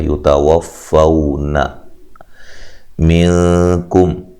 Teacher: یتوفون منکم، نون ساکن کا یہاں اخفا مع الغنہ ہے، ٹھیک ہے، غنہ کر کے پڑھیں گے، کاف کو باریک پڑھیں گے، میم ساکن کا یہاں اظہار ہے، غنہ نہیں کریں گے